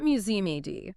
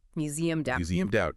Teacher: The D sound links directly to the word out.